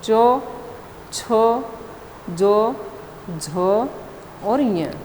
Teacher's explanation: च वर्ग में तालव्य स्पर्श, स्पर्श संघर्षी ये बताए गए हैं।